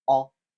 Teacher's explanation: And then we have O, which is a short vowel. O, it's rounded, it's back, it's open.